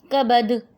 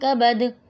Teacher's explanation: کبد یہ ساکن بن گیا نا دال، تو اس پہ ہم قلقلہ کریں گے. قلقلہ جماؤ کے ساتھ کریں گے. میں ذرا زیادہ کر کے بتا رہی ہوں، آپ لوگ جب ادا کریں گے تو آٹومیٹکلی کم ادا ہوگا وہ.